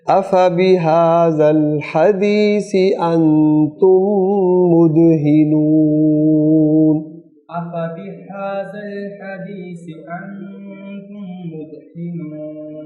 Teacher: حدیث کی جو ہا ہے وہ حلق سے آئے گی، یہاں جو پہلی ہا ہے وہ سینے سے آئے گی